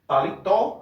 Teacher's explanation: Paletó, a última sílaba é a mais forte, termina com o, recebe acento. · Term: oxítonas